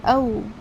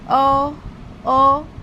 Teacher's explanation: Last میں آپ کا ہونٹ جو ہے گول ہوگا واو کے مخرج کے لیے۔ اسے پورا پراپر پڑھیں گے، او، او، واو کے لیے ہونٹ گول ہوں گے۔